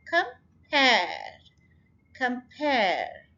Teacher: यहाँ पर pair पे स्ट्रेस है